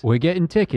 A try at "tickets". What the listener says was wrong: I think you're being quite like forceful with that T.